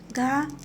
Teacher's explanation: घ महाप्राण और सघोष वर्ण है।